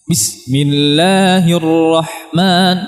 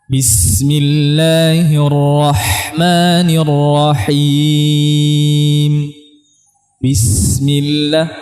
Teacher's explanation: Ya, tidak ada rakhawahnya kalau seperti itu. Maka kita alirkan suaranya pada sin dan ha.